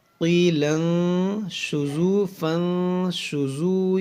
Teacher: اخفا ہوگا، نون ساکن کے بعد شین ہے